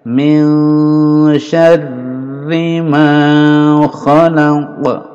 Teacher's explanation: Min ini ikhfa samar antara n bunyi n dan condong ke sya.